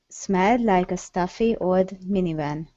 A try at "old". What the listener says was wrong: Give me an L sound on old. Instead of old minivan.